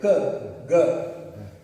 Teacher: g is coming from the gut gut back of your throat